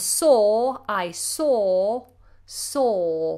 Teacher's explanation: I make a big space inside the mouth and the sound is very far back